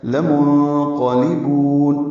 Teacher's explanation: لام کو لمبا نہیں کرنا، لا منقلبون نہیں پڑھ دینا، لام جلدی سے پڑھیں گے۔ نون ساکن کے بعد قاف آنے کی وجہ سے نون کی آواز چھپائیں گے، اخفا ہو گئی۔